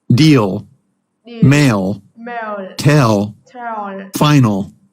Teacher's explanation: If it's one of the central or front vowels, like in the words deal, mail, tell, or final, pronounce the ol that's slightly darker than the regular one.